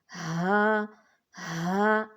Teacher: باری آواز میں آپ نے ادا کرنا ہے، سینے میں آپ کی وائبریشن بھی محسوس ہو